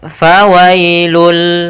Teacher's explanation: bunyi Nun yang dimatikan atau bunyi n maka ketika dia masuk Bunyi n-nya hilang langsung masuk ke hurufnya yaitu bunyi lam